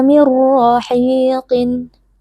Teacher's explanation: nun sukun kita idghamkan atau kita masukkan ke dalam huruf ro sehingga huruf ro menjadi huruf bertasdid lalu dibaca tanpa berdengung dan RO di sini karena berharakat fathah kita baca tebal dengan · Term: Idam bila gunah